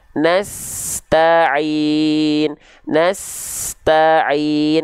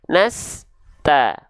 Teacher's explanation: Gak ada jeda antara s dengan ta. Tidak ada jarak di antara mereka.